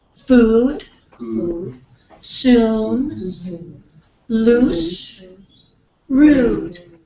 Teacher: Can You Feel the back of your tongue a little bit tensed so it's kind of like a muscle back here